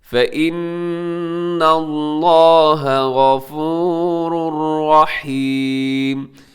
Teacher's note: لفظ اللہ موٹا پڑھیے گا کیونکہ اس سے پہلے نون کے اوپر زبر ہے